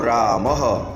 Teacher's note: વિસર્ગનું ઉચ્ચારણ સ્થાન કંઠ છે